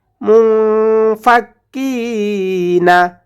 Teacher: মুন গুন্না করবো কারণ নুন সাকিনের পরে ইখফার হরফ ফা এসেছে